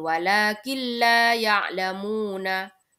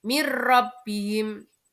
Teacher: Idgham bila gunnah ini adalah apabila ada nun sukun atau tanwin bertemu dengan salah satu dari dua huruf, yakni huruf lam dan ro. Cara membacanya adalah memasukkan tanpa mendengung. · ketika ada nun sukun bertemu dengan lam, maka cara membacanya adalah tanpa mendengung. Jadi langsung walakin la ya'lamuna gitu.